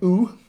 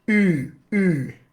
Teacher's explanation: Lips are rounded in both cases, but it's the piece of the tongue. The first one, this ooh here, I am using the back of my dorsum and arching it. The second one, ü, that guy right there, I'm using the front of my dorsum and arching that. So physically there is something very different going on because they are two distinctive sounds.